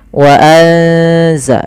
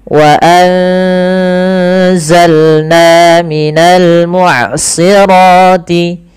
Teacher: Suara nunnya disamarkan ke zai. Wa anza sambil ditahan bacaan eng-nya atau bacaan gunnah ikhfa ya, dengungannya.